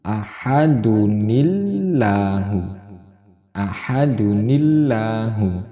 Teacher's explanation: Hamzah wasolnya diganti dengan nun yang berharokat kasroh.